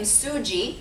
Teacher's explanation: There's also no Z sound in Korean, so it gets changed to a J.